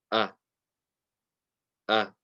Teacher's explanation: going to read the hamza okay so we mentioned yesterday that hamza comes from the bottom of the throat